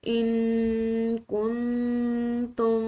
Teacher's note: ان کنتم نون ساکن ہے اس کے بعد کاف آ رہی ہے یہ جو کہ حروف فا میں سے ہے تو اس نون ساکن پر بھی ہم نے اخفا کرنا ہے اور اس کے بعد آنے والی نون ساکن ہے اس کے بعد تا ہے یہ بھی حروف فا میں سے ایک حرف ہے تو ان دونوں نون ساکن پر ہم نے اخفا کر کے پڑھنا ہے